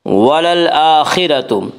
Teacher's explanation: حمزہ کے اوپر کھڑا زبر ہے، کھڑا زبر کو ایک الف کے برابر کھینچ کر پڑھیں گے